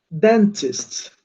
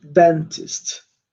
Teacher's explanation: Sílaba tônica aqui no começo.